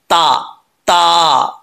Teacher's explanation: जुबान की नोक ऊपर वाले दांतो के जड़ों से लगे तो ता पढ़ा जाता है · زبان کی نوک اوپر والے دانتوں کے جڑوں سے لگے تو تا پڑھا جاتا ہے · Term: बरीक ता